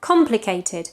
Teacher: Complicado tends to be pronounced in English complicated, but it's complicated with a stress at the beginning, yeah? Complicated.